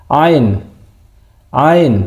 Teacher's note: Suaranya ditekan jadi ditenggorokan.